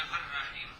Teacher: لام کو را کیا، پھر را کا را میں ادغام کیا تو بن گیا الرحیم